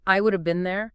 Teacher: We don't really hear that as five separate words. It often comes out sounding more like eat a bean there. one continuous often kind of blurred sound package. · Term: single sound units